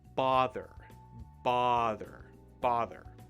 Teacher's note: Notice that there's no R in the word, or no first R.